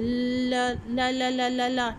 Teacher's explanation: इसमें हमने incomplete closure बनाया है, सेंटर पॉइंट पर हमने कांटेक्ट किया है और दोनों साइड से टंग की जो है वो एयर रिलीज़ होती है। तो ऐसे साउंड्स को हम कहते हैं लेटरल साउंड्स।